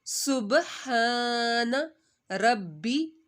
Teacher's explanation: سین کی سیٹی با پر حرف کلکلا کا ہے. سبحان ربی. با 2 دفعہ پڑھا جائے گا.